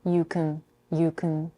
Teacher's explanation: She reduces the vowel in the verb can to a schwa.